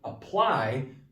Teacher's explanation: apply the ply is the stress part